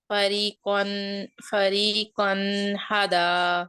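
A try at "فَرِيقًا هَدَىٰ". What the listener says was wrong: اب آپ اظہار نہیں کر رہی ہیں، اب آپ غنہ کر رہی ہیں. قن کی آواز کو بالکل بھی نہیں دبانا.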